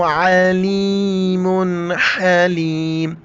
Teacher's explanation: पहले आइन को गले से अदा करना है, फिर हा को गले से अदा करना है।